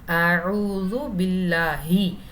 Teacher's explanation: ஐன் ஐன் நடு தொண்டையிலிருந்து வரணும். அந்த எழுத்தோடைய மஹ்ரஜ் பிறப்பிடத்தை மாற்றக்கூடாது.